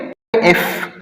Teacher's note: आप लोग ट्राई करें, एफ और वी इन दोनों को आप प्रोड्यूस करें। एफ, तो एफ प्रोड्यूस करने से हमारा जो निचला होंठ है और ऊपर वाले दांत है ये आपस में टच होते हैं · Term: लेबियोडेंटल